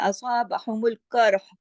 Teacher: قاف جو ہے موٹا پڑا جائے گا، را بھی اس کی وجہ سے موٹا ہو جائے گا